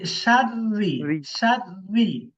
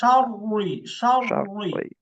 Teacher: মোটা করে পড়তে হয়। আর র এর নিচে যখন জের থাকে, রটাকে পাতলা করে পড়তে হয়।